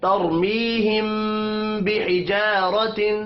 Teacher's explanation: آواز ناک میں جا رہی ہے، میم ساکن کے بعد با آ رہا ہے اس لیے یہاں پر اخفاء شفوی ہوگا۔